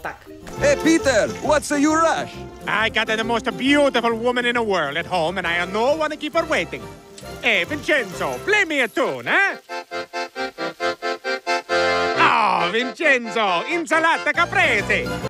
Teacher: итальянцы добавляют гласную после согласной уже, которая конец слова